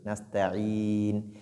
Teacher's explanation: Donc Nasta'in et Nun ici à Tawassut, c'est comme Maliki Yawmiddin. Donc on ne laisse pas le son continuer au niveau de Nun et non stopper aussi le son, mais plutôt rester au juste milieu